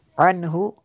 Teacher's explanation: عنہ، یہاں پہ غنہ نہیں ہو سکتا، نون ساکن کے بعد حروف حلقی ہے میں سے ہا ہے تو یہاں پہ غنہ نہیں کر سکتے